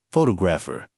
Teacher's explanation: The stress is on the second syllable, photographer, not photographer, or fo-2-graph-a.